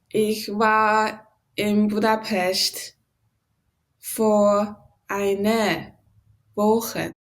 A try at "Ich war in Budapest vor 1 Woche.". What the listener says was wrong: Just the R, make sure to pronounce it clearly enough so it's hearable well, okay?